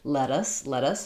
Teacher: let us both because what happens here is when there's t in the middle of a word followed by an unstressed syllable so let is stressed and us is unstressed